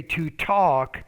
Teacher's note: you need to pronounce that t with a little bit more air